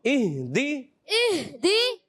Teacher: ہا ادا ہوتا ہے حلق کے نیچے والے حصے سے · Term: ہا کی ادائیگی